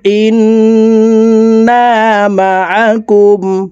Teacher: তাসদিদওয়ালা নুনের সাথে নাকের বাসি থেকে 3 সেকেন্ড পরিমাণ গুন্নাহ করে ধরে রাখবো। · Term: ওয়াজিব গুন্না